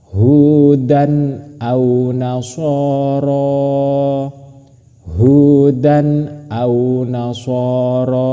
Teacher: Tanwinnya harus jelas, hamzahnya harus jelas, tidak boleh berdengung. Contohnya hudan au nasoro hudan au nasoro seperti itu yang benar bukan dibaca hudan au nasoro itu salah tapi yang benar harus jelas hudan au nasoro seperti itu. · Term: izhar